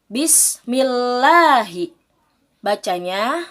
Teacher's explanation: lam tarqiq atau lam tipis lafadz Allah nya didahului oleh huruf yang berharakat kasrah